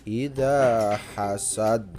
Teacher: idanya itu juga mat tabi'i, dibaca panjang 2 harokat. Ida hasad. Nah yang terakhir hasad itu qalqala, jadi dipantulkan hasad.